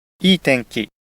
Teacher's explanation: we have 2 accented words, the adjective い い and the noun, 天 気。 both on the first mora.